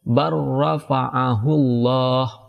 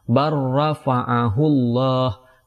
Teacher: langsung diidghamkan kepada huruf ra, tidak lagi dibaca bar.